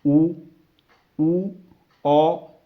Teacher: ਤਾਂ ਆਪਣੇ ਬੁੱਲਾਂ ਦੀ ਜਿਹੜੀ ਸ਼ੇਪ ਆ ਉਹ ਗੋਲ ਬਣ ਜਾਂਦੀ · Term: ਗੋਲ ਸਵਰ ਧੁਨੀਆਂ